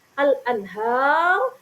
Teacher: Dan yang terakhir al-anhar, ro-nya sukun karena bertemu di akhir ayat, bertemu waqaf, maka ro-nya disukun. Ro sukun yang jatuh setelah harokat fathah, maka ro-nya ini dihukumi tafkhim atau tebal ya.